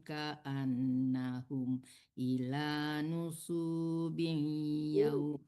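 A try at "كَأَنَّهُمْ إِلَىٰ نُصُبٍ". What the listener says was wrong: Nggak panjang sunya Ibu. Dan panjang sunya.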